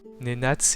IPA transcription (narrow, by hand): ne'nat͡s